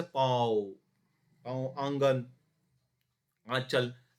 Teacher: ये वे ध्वनियाँ जिनका उच्चारण नाक और मुख दोनों से होता है, तथा उच्चारण में लघुता रहती है। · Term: अनुनासिक